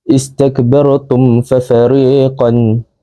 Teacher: ia berkaitan dengan dua bibir kerana huruf mim tersebut disebut dengan bibir. Cara bacaannya pula huruf mim mati disebut dengan jelas tanpa dengung. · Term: izhar syafawi